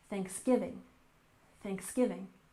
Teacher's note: Thanksgiving with a stress on the second syllable